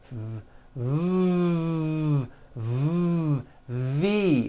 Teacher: an unvoiced sound it's unvoiced your vocal cords are not vibrating now same sound but this time we add voicing mmm v it becomes a V hmm you see that F no voicing V voicing boom so